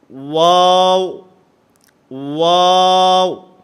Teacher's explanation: البتہ ان تینوں میں فرق یہ ہے کہ واو جو ہے یہ دونوں ہونٹوں کے گول ہونے سے ادا ہوتا ہے. نہ تمام گول کرنے ہیں، آپس کے اندر ہونٹوں کو ملنا نہیں چاہیے.